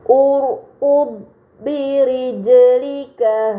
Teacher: Kemudian pada kata birijlika terdapat jim sukun, ini dinamakan qalqalah, maka harus dibaca secara memantul